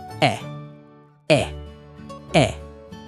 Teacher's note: Your tongue is kind of high in your mouth. Your lips are just relaxed. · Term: closed sound